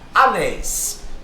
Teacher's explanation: A sílaba tônica é a última. Então, se é a última, é oxítona.